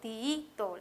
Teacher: Esto me ayuda a saber que es una palabra grave, ya que el acento está en la penúltima sílaba